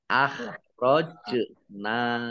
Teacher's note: jim sukun, bacaan kolkolah dibaca memantul, ditampakkan pantulannya